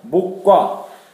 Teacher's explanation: 기억과 기억이 만나서 발음하기 힘드니까 모과로 가는 겁니다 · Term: 동음탈락